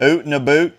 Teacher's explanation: it's just a little rounding of the vowels there